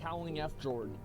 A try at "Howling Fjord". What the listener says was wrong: Asmon, look. F. Jord is not a word. Jord. J is silent. Jord. no, it's not F. Jord. Jord. It's Swedish. Viking word. Jord.